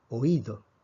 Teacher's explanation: Vemos que oído lleva la fuerza sobre la I. Esa es una vocal cerrada.